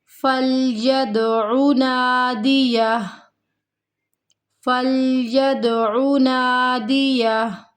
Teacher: یہاں پہ کلکلا ہو رہا ہے دال ساکن پر، عین کو نہیں کھینچنا، عین متحرک ہے۔